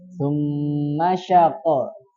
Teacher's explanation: Summa, namanya gunnah betul panjang. Panjang kan? Tapi ma-nya yang berharokat itu pendek.